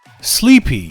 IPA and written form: ˈsliːpi (sleepy)